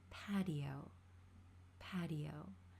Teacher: In American English, this t is going to become a flap t. We're going to pronounce it similar to a d sound.